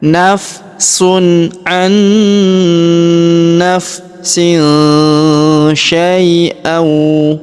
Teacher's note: tanwin bertemu huruf sya, maka kita dengungkan dan kita samarkan ya cara bacanya.